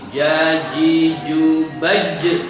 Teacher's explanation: ada qalqalahnya sifat pada jim ketika sukun